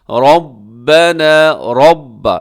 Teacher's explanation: را کے اوپر زبر ہے، منہ بھر کے پڑھنا ہے آپ نے۔ ربنا، یہاں جو مد ہے مد منفصل ہے، حروف مدہ حمزہ الگ الگ۔